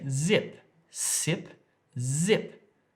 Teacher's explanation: if you put your hand on your throat you can feel it vibrating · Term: voiced